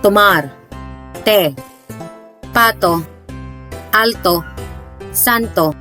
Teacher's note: T with the Spanish name of Te is pronounced as T, but the tip of the tongue must touch the upper teeth.